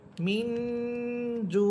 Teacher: নুন সাকিনের পরে জিম হরফ আসতেছে এজন্য এখানে গুন্না করে পড়তে হবে